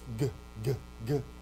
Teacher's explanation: you have this voiced g, g, g, and then you have aspiration, ghost, and you breathe out